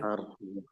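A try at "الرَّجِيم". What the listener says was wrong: Nah, tapi nggak terlalu banyak. Ar-Rajim. Nah, itu terlalu banyak. Jadi 1 2 kali.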